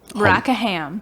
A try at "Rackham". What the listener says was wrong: Rackham, all one word.